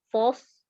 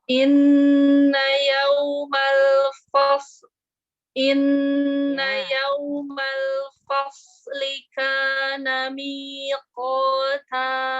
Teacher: Iya, fa-nya tipis, sodanya tebal.